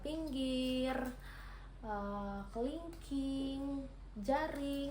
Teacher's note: Kemudian yang kedua yaitu vokal I tinggi bawah depan dengan posisi mulut semi tertutup